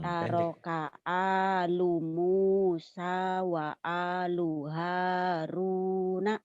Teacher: Iya kan lu-nya pendek. Kamu dipanjangin tadi.